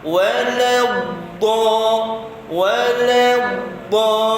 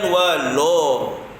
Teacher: Lam di atas la, tetap bunyinya la. Yang tebal tu dad itu.